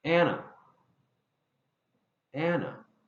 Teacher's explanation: So when I say and together, the D disappears. elision occurs once again.